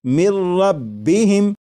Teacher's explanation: لکھا ہوا ہے من، لیکن جب نون ساکن کو را میں ملا کر پڑھیں گے تو پھر نون ساکن کی آواز نہیں آئے گی، بلکہ میم کے بعد را کی آواز آئے گی، اور یہاں پر غنہ نہیں کریں گے اور اسے پڑھیں گے مر ربہم۔ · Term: ادغام